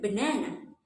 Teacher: the stress on the second syllable so the second syllable will be longer louder a little bit higher